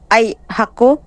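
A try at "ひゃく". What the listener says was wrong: Ku hindi o. Ku ah.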